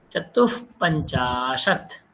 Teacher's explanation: তো চতুহু বিসর্গ আছে, তারপরে পঞ্চাশতের প আছে, তাই না? তো বিসর্গ আছে, প আছে, তো বিসর্গের উচ্চারণ হাফ ফ হয়ে যায়।